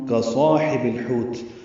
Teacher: واو ہونٹوں کی نا تمام گلائی سے ادا ہوتی ہے، اور تا ساکن پہ رک جائیں گے وقفاً، یہ مد عارض سکون بن جائے گی، تا پہ ہمس ہوگا